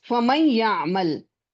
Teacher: So since it is incomplete, the gunna is because of the noon, since it is incomplete. So in this case, we observe that waw and ya do not have a gunna. The gunna in the pronunciation is due to the gunna in noon. Therefore, it's called incomplete merging with gunna, incomplete idgham with gunna, right?